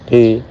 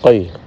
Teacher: Kalau kaf pada ki. Seperti ada angin yang keluar, sedangkan qaf tidak.